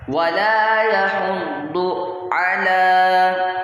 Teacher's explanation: یہاں پر ضاد پڑھنا ہے، دال نہیں پڑھنا۔ ولا یحض علی، عین کی آواز اچھے سے نکالنی ہے، علی طعام المسکین، طعام المسکین۔